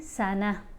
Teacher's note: یہاں پر وقف کر رہے ہیں سنہ، تا جو ہے یہ ہا کی آواز دے گی، خاموش ہو جائے گی